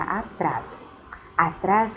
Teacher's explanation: que essa palavra é uma oxítona por quê Porque a sensação a sílaba tônica Ela está na última sílaba